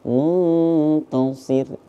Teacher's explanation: apabila nun mati bertemu dengan huruf Ta Ta ini salah satu huruf dari ikhfa maka ikhfa itu harus dibaca samar-samar